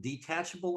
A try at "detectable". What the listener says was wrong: Just say that you said detachable amounts of THC, and it says detectable.